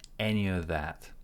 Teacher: We cancel the F. F is silent.